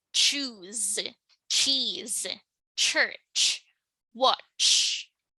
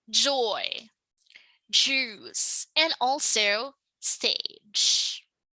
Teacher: a consonant sound that begins like a stop, but then releases like a fricative, thus making it a sort of a combination sound. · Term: affricates